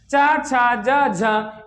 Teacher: इनको बोलने में थोड़ा सा ज्यादा ताकत पड़ती है, इसलिए अब क्या है, स्पर्श संघर्षी व्यंजन है। क्या है, स्पर्श संघर्षी व्यंजन, या कह सकते हो संघर्षी व्यंजन।